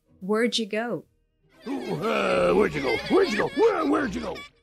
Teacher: contraction for where did you go so what we have here we reduce the auxiliary did to a d and put it together with the where and then we also have the Y for you right after